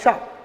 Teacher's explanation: तो जीभ को खड़ी करना है और आपको बोलना है श। तो इसका उच्चारण आपका सही हो जाएगा। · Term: मूर्धन श